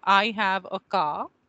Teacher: the k sound is velar. It is coming from the back of the mouth. It is a plosive. It releases with a burst of air, and it is unvoiced or voiceless in that sense.